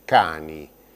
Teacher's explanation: sa consonanti occlusiva velari surda, su sono c de cani